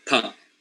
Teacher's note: we make a complete obstruction of the air with both the upper and the lower lips. And then when we release the air, then it comes out with a certain sound. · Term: Bilabial sounds